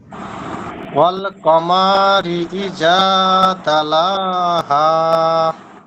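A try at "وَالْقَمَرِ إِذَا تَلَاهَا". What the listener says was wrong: কমাতে মনে হয় টান হয়ে গেছে, আর একটু সংক্ষেপ হবে।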